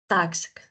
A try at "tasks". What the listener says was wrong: Tasks. Tasks. Remember that we must say the final consonants. They are not mute.